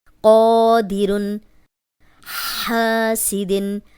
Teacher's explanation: خالی الف، پیچھے قوف پہ زبر، 2 حرکات لمبا کریں گے، اس کا نام ہے الف مدہ۔